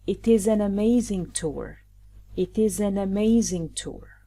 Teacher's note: We link T to I, then S to A, and then N to A.